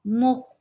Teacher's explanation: Circle your lips for meme and then go back. The lips should go to their normal position for kha. Don't circle your lips for kha.